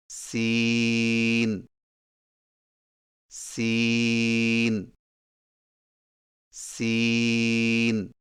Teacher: زبان کی نوک کو سامنے والے نیچے کے دو دانتوں کے کناروں سے مضبوطی سے لگا کر باریک اور سیٹی جیسی آواز میں پڑھیں